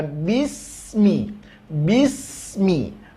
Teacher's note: Sin bersifat hams bagaimana kita mengalirkan Sin pada kata-kata Bismi